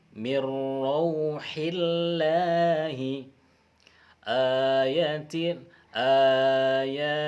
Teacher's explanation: jika huruf sebelumnya berbaris kasrah, maka huruf lam hendaklah dilafaz dengan tipis, tarqiq